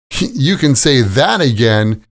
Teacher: The stress is on the word that.